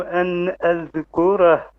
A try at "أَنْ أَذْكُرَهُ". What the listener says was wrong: Make your ra heavy.